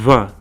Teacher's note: it's a bilabial sound so it's made by blowing air out of the lips this results in it sound almost like the letter V combined